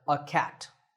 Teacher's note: in natural speech we don't say a we say uh